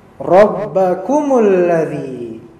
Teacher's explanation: ra-nya mufakhamah tebal. Fathah dia tebal jadinya.